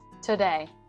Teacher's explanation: So very rapid speech, those vowels get dropped or, changed into this schwa sound.